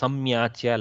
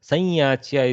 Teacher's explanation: That anuswara has to flow into the yakara. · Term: nasal twang